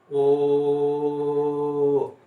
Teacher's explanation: सिर्फ ओ की आवाज आ रही है, ये मोनोप्थॉन्ग है।